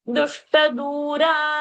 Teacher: So, du in dushta is short, but dura, du is long. So, you have to finish that fast, come and pause on du.